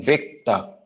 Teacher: वेक को लंबा खींच टर को छोटा करेंगे